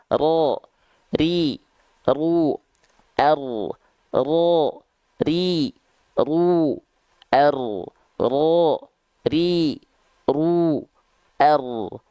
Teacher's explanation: dia tetap bergetar tapi bukan Getaran yang terlampau berlebihan · sedangkan huruf ro itu dia tidak menuntut banyak getaran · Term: takrir